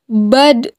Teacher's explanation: Ad-do memiliki sifat istitolah, di mana suara harus memanjang. Ad-do ketika dibaca dalam posisi mati.